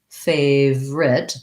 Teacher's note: most of the time though however we don't really say the middle syllable in this word we reduce it down to favorite two syllables